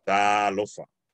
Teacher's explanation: because it's a macron, that means we elongate it to the space of two A's with only representing it with one.